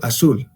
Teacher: este término azul, la Z, se convierte directamente como la S. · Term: ceseo